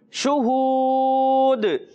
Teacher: شین کو تفشی کے ساتھ منہ میں آواز پھیلا کر ادا کرنا ہے